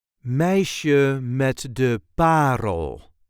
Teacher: There is a light emphasis on the first syllable of the last word.